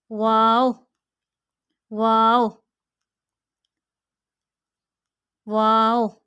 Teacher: दोनों होंठों के गोलाई वाले हिस्से से। इन दोनों होंठों की जब हम गोलाई करेंगे तो हमारा वाव अदा होता है।